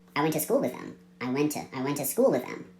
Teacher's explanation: went because we have two t sounds went and two so even after dropping the T in went we still have one t sound left